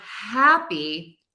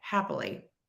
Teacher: when we have the word happy, hap is our stressed syllable.